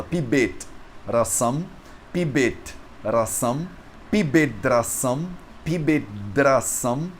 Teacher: o t que termina a palavra pibet, ele vira um d. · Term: sandhi